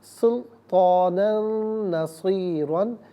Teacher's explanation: نون پر 2 زبر کی تنوین ہے، اسے نصیرہ کی نون کے ساتھ ملائیں گے، نون کی آواز کو غنّے کے ساتھ ادا کریں گے